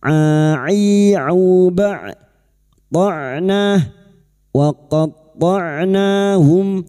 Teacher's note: Berikutnya huruf ain sukun, jangan samakan dengan hamzah. Huruf ain wastul halqi atau tengah tenggorokan.